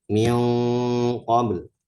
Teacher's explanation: Persiapan di qaf yaitu di pangkal lidah. Terus dia punya sifat isti'la, maka bunyinya itu atau suaranya agak tebal karena mengikuti sifat huruf qaf. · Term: ikhfa